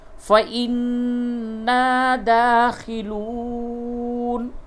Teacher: نون مشدد ہے، غنہ کیجئے اور دال کھڑا زبر دا، اس کو تھوڑا کھینچ کر کے پڑھیے. واو مدہ ہے، اس کو بھی تھوڑا کھینچ کے پڑھیے.